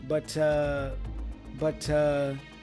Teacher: he joins butt with the schw sound up the schw sound up is the rting sound we make · Notice that he joins but with the schwa sound